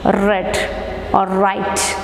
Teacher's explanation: the soft pallet is raised by closing the nasal passage and the articulators are brought near or brought near each other and they are not close enough to produce a friction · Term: frictionless continuance